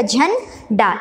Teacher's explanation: जल्दी से ना का थोड़ा कम उच्चारण करेंगे आधे ना में